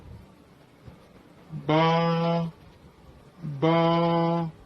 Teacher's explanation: ہونٹوں کی تری آپس میں ملے گی تو با